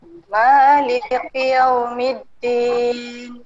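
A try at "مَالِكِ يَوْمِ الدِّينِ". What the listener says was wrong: Sebutan kaf itu dia bertukar off. Dia maliki yaum kaf. Dia bukan maliki off. Ki ka kaf.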